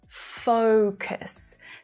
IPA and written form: 'fəʊkəs (focus)